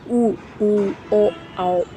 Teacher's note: वृत्त मुखी जिसमें हमारा पूरा मुंह जो है मुंह के जो ओठ हैं उनकी आकृति जो होती है गोल हो जाती है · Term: व्रतमुखी